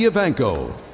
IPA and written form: iːˈvæŋkoʊ (Evancho)